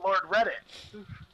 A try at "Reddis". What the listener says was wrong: Reddis, not Reddit. There's a s at the end of it.